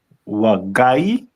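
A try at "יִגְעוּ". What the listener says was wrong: First letter is gonna be, it's not wa.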